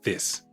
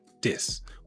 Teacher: switching out the TH for a D or a V